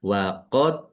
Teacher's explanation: dal sukun bacaan qalqalah dibaca memantul ditampakkan pantulannya